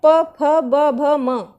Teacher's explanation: इनको बोलने में हमारे लिप्स जॉइंट हो जाते हैं